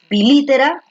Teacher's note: la fuerza de voz está aquí en la antepenúltima, por lo tanto es una esdrújula